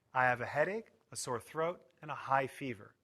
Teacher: we put stress on each item in the list and pause a little between each item